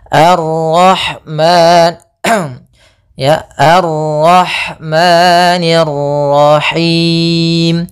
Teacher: ada Madi yaitu fathah ketemu Alif panjangnya dua harakat